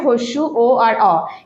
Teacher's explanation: এই স্বরধ্বনিগুলো উচ্চারণ করতে গিয়ে আমাদের জিভা ভেতরের দিকে উল্টে যাচ্ছে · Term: পশ্চাৎ স্বরধ্বনি